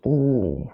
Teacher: the tongue is in the back, but your lips are protruded, and it's also closed.